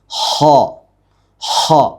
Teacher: തൊണ്ടയുടെ ആദ്യ ഭാഗമാണ് ഇതിന് മഖ്റജ്